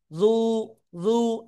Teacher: এই জায়গায় অনেকেই দ দ পেশ দু বলেন। খেয়াল করবেন জিব্বার গোড়ার কিনারা উপরে মাড়ির দাঁতের গোড়ার সাথে লাগাতে হবে, লাগিয়ে আমরা একালিপ টেনে পড়বো।